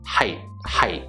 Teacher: We close off that T sound, and the way that I'm doing that, I notice height, height. My tongue is going up to the roof of my mouth and sort of cutting off the sound. So I don't actually get to the T, I just height, height. · Now, some people might tell you it sounds like height with the hard T sound at the end, but when we're speaking fluently, we don't actually pronounce that T sound. We close off that T sound